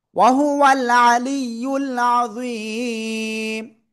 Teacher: থেমে পড়লে মিম সাকিন। আর তার আগে এক আলিফ মাদের জন্য তিন আলিফ টেনে পড়বো এক আলিফের জায়গায়।